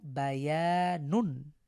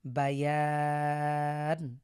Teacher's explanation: তো আমরা যদি এখানে ওয়াকফ করতে চাই তাহলে এই এক আলিফ যেহেতু আগে থেকেই আছে, ইয়া আলিফ জবর ইয়া মাদের হরফ, এক আলিফকে আমরা তিন আলিফ টেনে পড়ব।